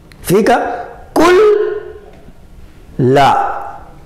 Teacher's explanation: Incorporamos o Nun dentro do Lam.